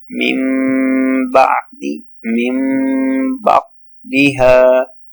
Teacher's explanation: after noon sakin, ba comes, so we convert noon sakin with mim and do gunna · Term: iqlaab